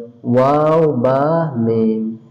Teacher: 15 নম্বর মাখরাজ, দুই ঠোঁটের মধ্যখান হইতে 3টি হরফ উচ্চারিত হয়